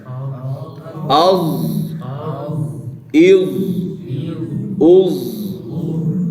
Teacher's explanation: ادا کریں از، سیٹی کے بغیر.